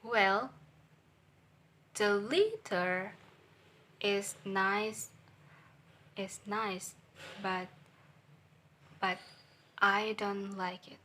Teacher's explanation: Well is a flat voice level, and letter is a high voice level, and is a flat voice level, and like it is low voice level. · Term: combining intonation